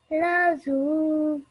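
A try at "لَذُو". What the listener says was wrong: This letter here, a vowel, okay? So in the way that you would say the English word that or this, the sound, that's how you pronounce this. So this is pronounced as ladu. Try not to get the Z sound in, okay? The way you're reading it is how an Urdu speaker would pronounce this particular letter.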